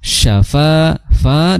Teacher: Fa makhrajnya adalah di ujung gigi bertemu dengan bibir bawah. Fa disertai dengan mengalirnya udara. Syafa fa dua harakat syafaatu ya.